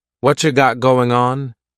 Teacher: What cha is what plus you. You becomes cha.